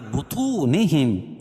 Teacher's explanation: بطو طا کو پر پڑھیں گے اور واو ساکن سے پہلے طا کے اوپر پیش ہے تو واو مدہ بھی ہوگا